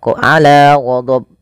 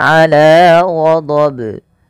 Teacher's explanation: Yang benar adalah tidak menambahkan hamzah dan dia harus memantul. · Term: qalqalah kubra